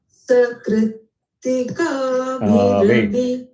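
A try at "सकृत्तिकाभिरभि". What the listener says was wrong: Kritika. Is Kri Anudata and Ka Swarita? Then why are you doing Kritika? Sakrit Udata. Sakritika. Ka Udata. Sakritika.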